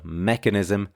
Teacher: should be stressed on the first syllable, mechanism. These can be tricky because, for example, with mechanical, we stress the second syllable, but with mechanism, we stress the first.